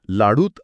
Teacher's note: उ आणि आ एकत्र आले आणि फक्त उ शिल्लक राहिला कारण लाडू म्हणताना ओठ आधीच गोल झालेले असतात